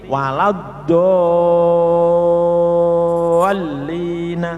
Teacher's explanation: Nah, ini dol itu mad, lamnya tasdid berarti alif atau mad bertemu tasdid, panjangnya 6 harokat, dihitung 6 kali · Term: mad lazim kilmi musaqqal